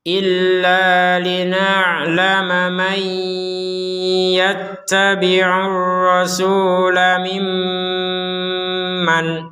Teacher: karena tidak gabung sama ya maka Nun Nun sukunnya dibaca dengan jelas